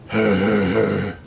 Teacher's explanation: Glottal fricative, and breathy voiced mid-low central unrounded vowel, repeated.